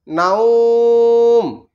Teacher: নুন ওয়াও মিম জবর নাউম, তাহলে এখানে ওয়াকফের জন্য এটাতে আমরা জজম দিয়ে দিচ্ছি। আর লিন হরফের বামের হরফে ওয়াকফের জন্য এক আলিফ টানতেছি